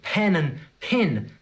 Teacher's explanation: They both sound like pin to me.